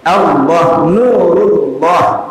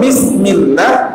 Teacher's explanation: dia melafalkan dalam keadaan tebal, khususnya pada lafzul jalalah dalam riwayat hafaz, dan dia dihindari oleh fathah atau dhammah tadi, maka posisinya tidak lagi di sana, dia agak semakin naik ke atas. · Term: sifat inhiraf